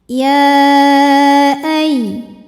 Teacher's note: Hamzahnya alif dengan harokat fathah pada kata ayyuha. Maka ya dipanjangkan boleh 4 boleh 5 harokat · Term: mad jaiz munfasil